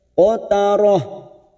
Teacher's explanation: Haquha qatarah ujungnya kita rem. Tak marbuto yang berharokat dumatain dibaca waqaf, ujungnya kita baca pendek.